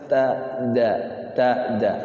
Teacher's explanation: Tak sama da satu tempat di belakang gigi yang atas.